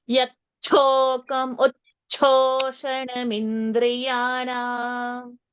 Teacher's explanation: Mahaprana cha should come.